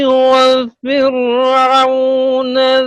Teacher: یہ فرعون کی را جو ہے آپ نے اس کو ایسا محسوس ہوا ہے جیسا پر کر دیا ہے, اس کو پر نہیں کرنا, باریک کرنا ہے